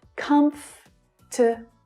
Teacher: the first syllable is the stressed one, and the following syllables reduce down to the schwa sound